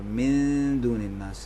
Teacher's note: من دون الناس میں بھی ہے، نون ساکن کے بعد دال ہے، یہاں بھی نون کو دال میں چھپائیں گے، دال کے مخرج پہ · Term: اخفا